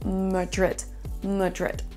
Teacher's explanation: ce n'est pas un A, mais un E qu'on va prononcer. C'est le son schwa